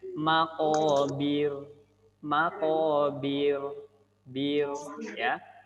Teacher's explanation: Kalau ro yang tipis, lidah belakangnya tidak ditempelkan ke langit-langit atau infitah ya, turun ke bawah. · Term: ro tipis